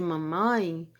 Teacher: articulador ativo ele vai estar abaixado e aí a cavidade nasal a corrente de ar se divide entre cavidade oral cavidade nasal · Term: sons nasais